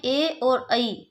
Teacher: कंठ तालु में ए और ऐ, इनको बोला जाता है, इन्हें कंठ तालव्य कहा जाता है